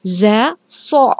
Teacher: berasal dari ujung lidah dan bertepatan di tengah-tengah gigi seri atas dan gigi seri bawah